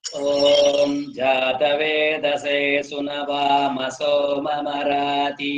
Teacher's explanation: ಓಂ ಜಾತವೇದಸೆ ಅನ್ನುವಲ್ಲಿ ಜಾ ಡೌನ್, ತ ಮಧ್ಯದಲ್ಲಿ, ವೇ ಅಪ್. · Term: ಏರಿಳಿತ